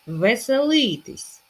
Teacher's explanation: наголос на першу и